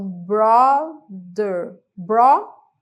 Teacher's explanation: esse TH ali no meio da palavra é como se fosse um som de D